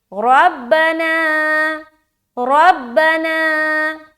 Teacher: را کو موٹا اور نا میں ہم کھینچ رہے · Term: الف مدہ